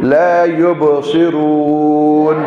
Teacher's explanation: یا کے بعد با پر جزم آگے حروف قلقلہ میں سے, اس پر یب پڑھیں, یب ہاں یہ قلقل ہوگا. اور صاد موٹا بھی ہوگا, سیٹی بھی ہوگی